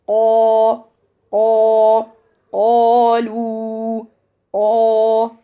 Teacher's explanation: letter qaf has no air at all